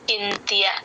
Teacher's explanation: మధ్యలో ఎక్కడ సున్నా వచ్చిన త ముందు ఎన్ సౌండ్ లాగే చెప్తాము